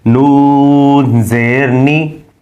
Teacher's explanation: مخرج کے اعتبار سے نون جو ہے وہ بھی باریک ہے، ناک میں آواز نہیں جانی چاہیے،